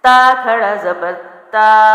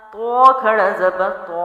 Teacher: یہ تا باریک ہے اور تو موٹا ہے، آوازیں مل رہی ہیں لیکن حرف ایک دوسرے سے بالکل مختلف ہے، ادائیگی بھی مختلف ہے، اس لیے آواز بھی مختلف کرنی ہے، صرف مل رہی ہے، ایک نہیں ہے۔